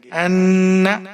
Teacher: حمزہ کے اوپر زبر ہے، نون کے ساتھ ملائیں گے اور یہاں پر غنہ کریں گے